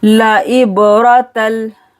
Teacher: बा पर कलकला करना है